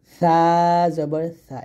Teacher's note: জিহ্বার আগাটা আপনি উপর দাঁতের আগার সঙ্গে লাগাবেন, পাতলা করে বাতাস বের করে উচ্চারণ করবেন